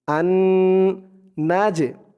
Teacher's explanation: আন নাজে, এখানে একটা গুন্না আছে ওয়াজিব গুন্না, হরকতের পরে নুনের উপর তাসদিদ, তাই এখানে ওয়াজিব গুন্না হয়েছে।